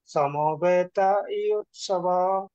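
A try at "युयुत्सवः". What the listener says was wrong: সবাহা। বিসর্গ আছে না? সবাহা।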